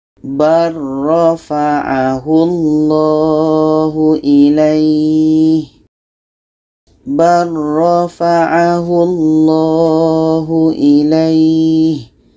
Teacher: Jadi lam dengan roh ini makhrajnya berdekatan. Maka bacaan ba ini terus masuk ke roh. Kita tidak perlu baca lam ini.